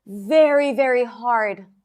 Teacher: Hard is more stressed than the very and the very, right?